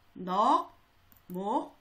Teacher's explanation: 기역과 시옷 중에 기역이 소리가 나지요.